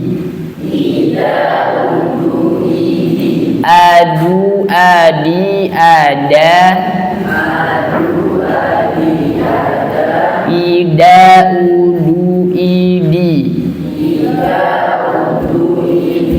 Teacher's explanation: Dia memiliki sifat jahar dan syiddah, yakni udaranya tertahan, suaranya juga tertahan. Jadi tidak ada udara yang keluar pada huruf dal.